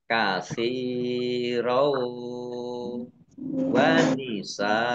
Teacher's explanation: Fathah tanwin bertemu dengan huruf wawu, idgham bi gunnah, masuk dengan mendengung. Mendengung wawu, ditahan wawunya.